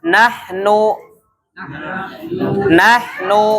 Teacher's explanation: maka suara yang keluar dari hidung itu hanya Nun